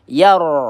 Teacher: ro sukun ya kita baca dengan tebal karena huruf sebelumnya berharakat fathah. Yar seperti itu ya bukan yar.